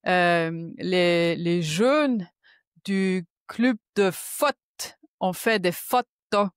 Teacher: c'est vrai que les O sont très ouverts, les E sont très fermés et puis il y a comme un peu par moment des hachures dans la phrase et c'est mmh voilà.